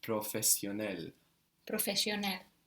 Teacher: the a l in English it becomes eel in Turkish